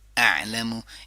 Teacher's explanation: گلے کے نچلے حصے سے شروع کریں گے, عین پہ بند کریں گے